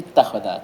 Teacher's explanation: hamzah ini diidgham ke ta jadi ittakhadha. Jadi dia tidak butuh kaidah khusus ini ya, tetap dibawa ke wazan aslinya jadi ittakhadha, cuman ada proses i'lal ini ya, sehingga hamzahnya diidgham ke ta.